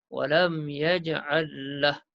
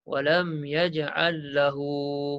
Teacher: Kalau kita wakaf, mat tak ada.